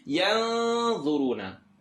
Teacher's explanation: Not in the throat, not yarmalun. I'm going to go ahead and make this tongue not touch, and it's going to be heavier because dha is heavy.